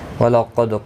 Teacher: دال ساکن پر قلقلہ ہوگا